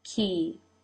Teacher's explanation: the corners of the lips pull out now to make the E as in she in turkey